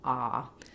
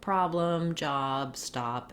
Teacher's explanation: you really want to have an open, back, unrounded vowel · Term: open ah sound